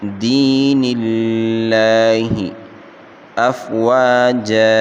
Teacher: يدخلون فی دین اللہ، دی یا مدہ ہے، اس کو 1 الف کی مقدار کھینچ کر پڑھیں گے، اور لفظ اللہ کے لام کو باریک پڑھیں گے۔ لفظ اللہ سے پہلے نون کے نیچے زیر ہے، اس لیے لفظ اللہ کو باریک پڑھا جائے گا